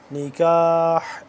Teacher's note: ہا کو حلق کے درمیانی حصے سے صحیح کلیئر کر کے نکالنا ہے کیونکہ یہ دوسرے یہ والا جو ہا ہے اس سے جدا کر کے پڑھیں گے.